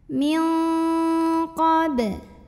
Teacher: nun sukun dibunyikan samar-samar siap-siap ke qaf disertai bunyi dengung. Bunyi dengungnya paling besar untuk qaf ini. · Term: ikhfa ab'ad